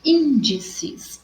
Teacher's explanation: o in é mais forte, proparoxítona recebe acento, terceira sílaba